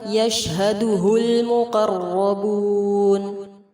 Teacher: شین ساکن پر ہمس کریں گے، لام لام قمریہ ہے، قاف اور را کو پر کریں گے اور مد عارض کے ساتھ وقف ہوگا.